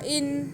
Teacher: ہم نون کی آواز کو یہاں پہ ناک میں چھپا کے پڑھیں گے اخفاء کرتے ہوئے، گنہ کرتے ہوئے.